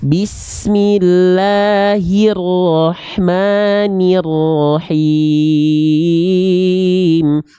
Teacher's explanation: Bismillahirrahmanirrahim, bukan he tapi hi. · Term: vokal i